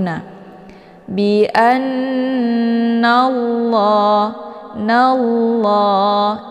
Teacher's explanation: sebelum lafaz jalalah itu berharakat fathah yaitu Na bianallah nallah jadi lnya tebal dengan posisi semua permukaan Sisi ujung lidah itu menempel di langit · Jadi la-nya tebal dengan posisi semua permukaan sisi ujung lidah itu menempel di langit. Kemudian la dibaca panjang, ada harokat fathah berdiri tegak. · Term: tafkhim